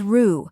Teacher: a quick, unstressed syllable like the ra in sofa